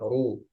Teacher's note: Seperti lam, kadang dia dibaca tebal, kadang dibaca tipis. Nah, ro domah dia tebal. Ru. Jadi bukan ru.